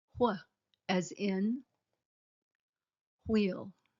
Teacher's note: Note, the WH digraph is a little different from the rest. It's not a new sound, but changes WH to HW.